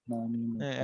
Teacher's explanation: জিহ্বার আগাটা কি লেগে আছে? দাঁতের মাড়ির সঙ্গে লেগে আছে।